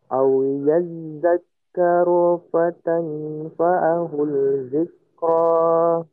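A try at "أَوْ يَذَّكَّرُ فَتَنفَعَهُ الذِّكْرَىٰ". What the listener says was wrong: Di situ ada hu masuk ke huruf zal, lamnya hilang. Lamnya hilang, masukkan ke huruf dal ya. Masukkan ke huruf dal. Fatanfa'ahul zikra.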